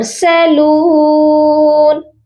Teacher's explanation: لام کو ہم نے ایک الف کی مقدار لمبا کرنا ہے